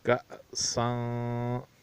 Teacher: کاف پتلا، حمزہ بھی پتلا، اور سین سخت اور پتلا، اور نون تنوین کے بعد کوئی بھی حرف نہیں ہے، حروف ہلکی نہیں ہے، اس لیے اس پہ اخفا کیا جائے گا۔